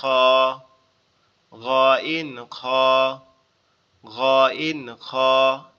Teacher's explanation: কণ্ঠনালীর শেষ ভাগ হতে উচ্চারিত হয় গ ইন খ